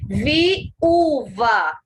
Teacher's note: dois sons vocálicos em sílabas diferentes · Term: hiato